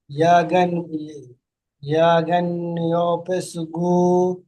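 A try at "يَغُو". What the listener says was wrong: গাইন নই গইন, ইয়া গইন পেশ ইউগু,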